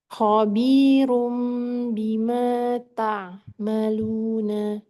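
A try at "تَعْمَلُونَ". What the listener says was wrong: Tapi ini agak ke hidung ya. Ta'ma.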